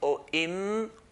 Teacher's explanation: the makhraj point of a mim is when the 2 lips touch together lightly. Or im or when the sound stops, that's where makhraj is.